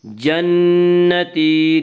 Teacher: نون مشدد غنہ ہوگا، غنہ کی مقدار 1 الف ہے۔